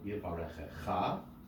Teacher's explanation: So the accented syllable is indeed the last syllable.